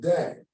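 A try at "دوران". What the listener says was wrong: switched, you changed the last letter. Dawrun.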